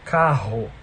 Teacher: a língua não necessariamente encosta lá no véu palatino, mas a língua aponta para lá. Então, a língua faz uma curvinha assim e ela está apontando para o véu palatino. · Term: velar